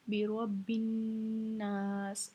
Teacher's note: हमने इस रा को मोटा पढ़ना है क्योंकि इसके ऊपर ज़बर है